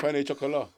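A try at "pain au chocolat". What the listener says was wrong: I don't know, but it's not penne. I'm sure it's just like pan chocolat.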